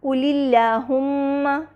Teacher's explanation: یہاں پہ کیونکہ اللہم سے پہلے کسرہ آ رہا ہے، قُلِ اللہم، لہٰذا ہم نے اللہم کے لام کو باریک پڑھا۔